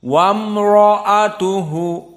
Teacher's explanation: Dan makhrajnya baina syafatain bil intibaq. Dan di sini wam semuanya muraqqaqah, baru ra mufakhamah.